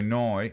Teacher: And the Australians don't say no, they go noi, which sounds like us.